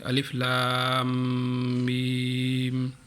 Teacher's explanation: Colour same pink colour ہے تو اس کو غنہ کرنا ہے۔ جب لام کو میم کے ساتھ ہم ملائیں گے تو اس کی آواز ناک سے تھوڑی نکالیں گے اور لمبا اس کی آواز کو لمبے کر دیں گے